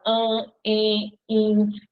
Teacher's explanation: As vogais no meio da palavra, diante de M e de N, vão ficar com o som nasal.